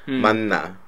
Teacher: it becomes more like the N sound. So it's pretty much like you're just saying two N's. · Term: nasalized